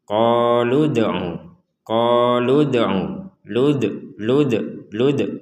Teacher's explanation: membacanya dengan pantulan jadi qoludu qoludu lud lud lud jadi pantulan harus ada pantulan untuk huruf Dal yang sukun